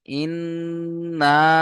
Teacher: এক আলিফ গুণনা হবে, 2 থেকে 3 আলিফ টান হবে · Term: মাদ্দে মুনফাসিল